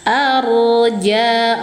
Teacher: Arja, roknya dibaca tafkhim ya, karena sebelum rok berharokat fathah, roknya harus dibaca tafkhim tebal, naik pangkal lidah sambil dialirkan sedang